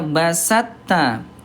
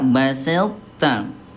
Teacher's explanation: Yang pertama langsung ke ta, yang kedua memunculkan sifat tebal to dulu baru ke ta ya.